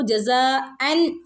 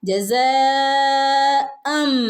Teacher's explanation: കാരണം അവിടെ ജസം എന്ന് പറയണം അൻ എന്ന് നമ്മൾ ഓതില്ല അവിടെ മാറ്റിമറിച്ചു അൻ എന്നുള്ളതിനെ അം എന്നാക്കി മാറ്റിമറിച്ചു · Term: ഇഖലാബ്